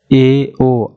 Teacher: जैसे आप बोल रहे हैं आ, तो पूरा हमारा मुख जो है एक तरह से खुल रहा है। अर्धवृत्त ए ओ, आधा जो है मुख खुल रहा है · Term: अर्धविवृत स्वर